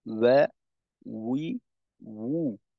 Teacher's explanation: ওয়াও এর উচ্চারণে দুই ঠোঁটকে একেবারে গোল করে উচ্চারণ করতে হবে। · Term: দুই ঠোঁট গোল করে